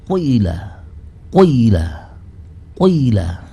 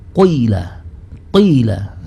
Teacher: harokat dhamma ini yang namanya dhamma kan harus memoncongkan kedua bibir, harus mencucu. Tetapi temponya hanya sepertiga harokat. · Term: ismam